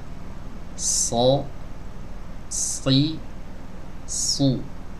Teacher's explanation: Ini gigi seri bawah, dinding bagian dalamnya tapi bagian bawahnya itu ditempelkan ya, atau ujung lidahnya condong ke situ ya. Kemudian suaranya dikeluarkan dari celah kecil antara gigi seri atas dan gigi seri bawah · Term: huruf shad